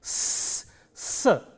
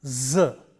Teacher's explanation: The first one is a voiceless sound s, s, and the second one is a voice sound z, s and z. If you take a word like size, size, you have the s sound initially and z sound finally.